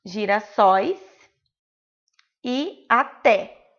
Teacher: é a última sílaba tônica, a última sílaba forte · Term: oxítonas